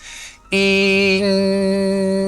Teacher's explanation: I use the vowel E, which is really thin, and then I send it through my nose.